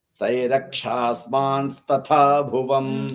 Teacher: So im sound will change to in. Rakshasmans, mans, it will change into in.